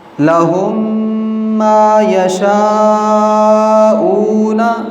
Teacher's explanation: میم ساکن کے بعد میم آئے تو میم کو دوسرے میم سے ملا کر غنّے کے ساتھ پڑھیں گے۔ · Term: ادغام